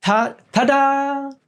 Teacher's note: the tongue it goes just above the teeth it goes on the root of the teeth but just above the teeth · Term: dentals